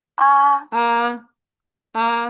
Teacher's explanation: এই প্রথম টোনকে flat tone বলে। ফ্ল্যাট ভাবে যাবে ভয়েসটা, স্বরটা ফ্ল্যাট ভাবে যাবে।